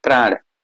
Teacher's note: जैसे मतलब प्राण बोले तुरंत अगर आप जो प्र के उच्चारण के लिए जब ओठ प के लिए मिले उसी समय र भी बोलिए